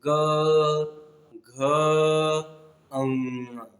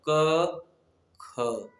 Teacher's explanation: जिस वर्ण को पढ़ने में गले में कंपन नहीं होता है उसे कहा गया अघोष